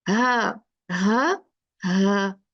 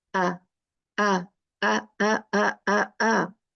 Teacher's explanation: हा में जो है वो है एयर है, हमजा में नहीं है